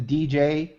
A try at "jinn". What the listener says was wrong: You pronounce it like Jinn, but in Arabic no D in it. In Arabic it's like GN, just Jinn. There's no D or Yeah, just like because the Arabic letter for G is like G.